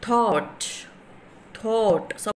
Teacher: the air escapes to the through the gaps between the tongue and the teeth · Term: dental fricative